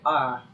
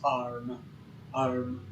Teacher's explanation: The way that they describe it specifically is A in arm, but you lower the back of your tongue to say it, so it's arm.